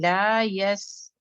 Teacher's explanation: سین میں چونکہ سفیر ہے، سین ایئر لیٹر ہے، ایئر کو ایک دم سے روکا نہیں جا سکتا ہے